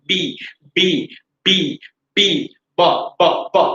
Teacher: By using our two lips we are supposed to pronounce this sound। দুই ঠোঁট দিয়ে উচ্চারণ হবে, মাঝখান দিয়ে বাতাস বের হবে না, একসাথে এক্সপ্লোশন দিয়ে বাতাস বের হবে।